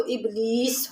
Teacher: جب ہم وقف کریں گے تو ابلیس ہو جائے گا، یعنی بڑی زبر اور یہ حالت وقف میں گر جاتی ہے۔